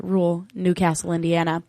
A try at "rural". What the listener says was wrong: Isn't there a second R?